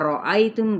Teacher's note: را پر پڑھا جائے گا زبر کی وجہ سے